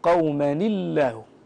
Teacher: فتكسر هذه النون الساكنه بسبب التقاء الساكنين وترقق اللام بلفظ الجلاله